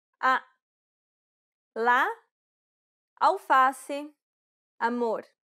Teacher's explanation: This vowel sound is very similar to the a in father. This vowel sound is considered an open A sound because the jaw is low and the mouth is wide and open.